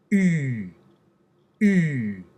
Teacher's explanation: Have your students say an e, and then say, okay, now hold your e, and then well, actually, don't hold your E. Say an E, but then round your lips.